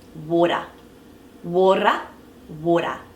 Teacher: roll over once water water water so it's so soft that it's almost like a rolled up but just that one rotation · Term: soft D sound